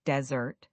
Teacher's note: Desert, the sandy place, has the stress on the first syllable